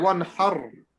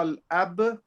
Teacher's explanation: ra sakin, if it's got a fatha before it, we have to make it full mouth